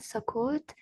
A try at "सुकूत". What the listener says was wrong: हाँ, सकूत। सकूत और सकोत, लिखा तो वही है।